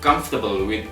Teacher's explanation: So we pronounce it comfortable we omit the O sound in the middle.